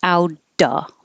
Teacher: Out of is the T changes to a D. Outa. Because we don't have to say of.